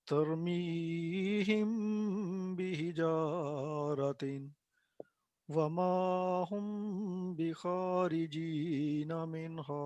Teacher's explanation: جب بھی میم ساکن کے بعد با آئے تو آواز وہاں پہ کیا ہوتی ہے؟ ٹھہرتے ہوئے لمبی ہوتی ہے